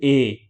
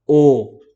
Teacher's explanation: थोड़ा सा और जगह करके बोलेंगे तो हमसे अर्ध संवृत निकलेंगे जैसे कि ए तो आप देखेंगे थोड़ा सा मुंह ज्यादा खोलना